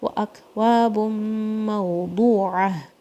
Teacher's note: واو اور الف ٹو count, واو کو وی کی طرح نہیں پڑھنا ہے